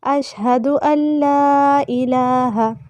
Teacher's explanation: یہاں پہ نون جو ہے اس کی ادائیگی نہیں ہوگی، حمزہ کو ہم لام کے ساتھ ملائیں گے. جزم کے بعد جب شد آ جائے تو جزم والا حرف نہیں پڑھا جاتا.